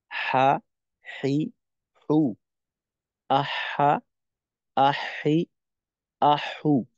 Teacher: হা এর ক্ষেত্রে হা হলো একটু আইনের থেকে দুর্বল